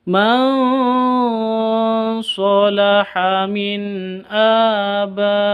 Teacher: Terus fa mad bertemu dengan hamzah di satu kata. Abaihim ini satu kata. Jadi bacanya harus wajib 5 harokat atau sampai 6 harokat. · nun sukun bertemu dengan hamzah, berarti bacaan izhar. Izhar halqi ini bacanya jelas. · Man salaha ini nun sukun bertemu dengan sod, berarti bacaan ikhfa. Ikhfa samar disertai dengung.